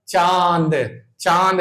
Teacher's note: अनुनासिक स्वर अनुनासिक जैसे अंग अंग बोलो आ पर बिंदी है तो अंग देखना मुंह और साथ में नाक पे भी जोर पड़ेगा नाक से भी हवा निकलेगी अंग अंग फिर इसके बाद चंद्रबिंदु वाले जितने वर्ड जैसे चांद लिखते हो चांद बोलो तो मुंह मुंह के साथ नाक पर भी जोर आएगा चांद चांद देखना यहां से भी जोर आएगा हवा निकलेगी खुद आप बोल के देख महसूस करें क्या ऐसा हो रहा कि नहीं हो रहा?